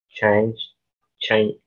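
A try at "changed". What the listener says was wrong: No escucho esa ED.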